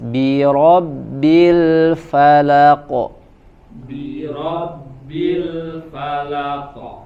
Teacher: Ro-nya tebal, bi-nya tipis.